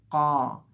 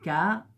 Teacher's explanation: حرف القاف جو ہے یہ حلق سے بولنا ہوتا ہے، اور اس کا ساؤنڈ ہے قا، حلق سے نکالنا ہوتا ہے قا۔